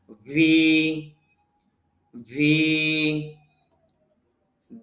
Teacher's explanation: ভি এটাও নিচের ঠোঁটের পেট উপরে দাঁতের আগার সঙ্গে লাগবে, তবে এটা আমাদের একটু ভাইব্রেশন হবে আর কি, কাঁপবে একটু।